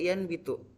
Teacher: Sebagai contoh yaitu yanbitu, yang dimana nun berubah menjadi kata mim karena adanya huruf ba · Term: asimilasi parsial